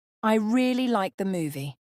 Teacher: emphasis on really makes it sound like you had a strong emotional reaction